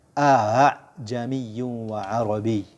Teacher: Hamzah yang pertama itu dibaca tahqiq jelas, yang kedua antara hamzah dan alif. Jadi a'jami, bukan dibaca a'jami atau a'jami atau a'jami, tapi dibaca a'jamiyyun wa arabi.